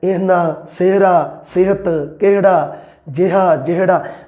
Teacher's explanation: ਬੋਲਣ ਦੇ ਵਿੱਚ ਜਿਹੜੀ ਸਿਹਾਰੀ ਦੀ ਮਾਤਰਾ ਬਹੁਤ ਥੋੜ੍ਹੀ ਹੈ